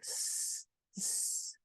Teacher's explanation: hindering the air by kind of squeezing it between your teeth